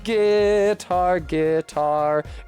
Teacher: guitar has the stress on the second syllable so you have to say it like guar guitar in order